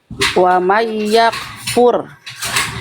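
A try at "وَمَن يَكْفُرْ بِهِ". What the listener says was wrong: Ya, jadi jangan mantul, jangan tipis. Contoh, kalau saya contohkan, perhatikan. Wa may yakfur bihi. Yakfur bihi. jangan fur. Jadi jangan fur, Bunda. Jangan fur. Jadi bukan wa may yakfur. Wa may yakfur bihi.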